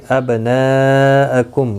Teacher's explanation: ابناءکم میم ساکن کے بعد واو آیا ہے، اظہار شفوی ہوگا، گنہ نہیں ہوگا